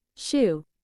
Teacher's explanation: the front of the tongue comes into contact with the hard pallet creating a narrow opening for the airflow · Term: voiceless palato-alveolar fricative